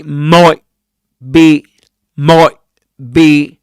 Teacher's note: you could produce here a glottal stop and say might be might be actually assimilates the sound t to the following sound and in that case you'll get might be.